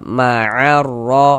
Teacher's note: Jadi cara membacanya itu dari a langsung masuk ke huruf ro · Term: idgham syamsiyah